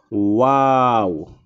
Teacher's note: দুই ঠোঁটের গোল করিয়া সামান্য খোলা রেখে উচ্চারিত হয় ওয়াও · 15 নম্বর মাখরাজ 2 ঠোঁটের ভেজা জায়গা হইতে উচ্চারিত হয় বা এবং 2 ঠোঁটের শুকনা জায়গা থেকে উচ্চারিত হয় মিম এবং 2 ঠোঁটের গোল করিয়া সামান্য খোলা রেখে উচ্চারিত হয় ওয়াও